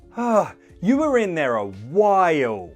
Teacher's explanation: express how annoyed I am at the length of time but to make it clear that you mean ah this is a long time just stress the word while like this